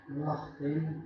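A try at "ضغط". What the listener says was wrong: Dhaghtin ya. Udah dapat itunya tuh. Makhrajnya sifatnya udah dapat, cuman belum kurang tebal. Lidahnya kurang diangkat berarti.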